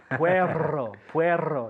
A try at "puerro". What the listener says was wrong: Yeah, puerro.